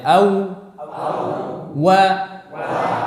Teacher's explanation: Ketiga huruf ini makhrajnya sama dari dua bibir, namun cara pengucapan yang berbeda. Pertama, huruf waw dia keluar dari dua bibir dengan memajukan kedua bibir itu.